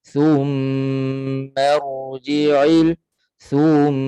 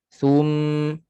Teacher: Sepatutnya thu tu satu harakat sahaja.